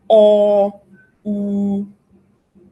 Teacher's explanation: But pay attention to these ones. O, U, you'll see that my tongue is retracted. It is actually the back of the tongue that is raised. And so those are called back vowels.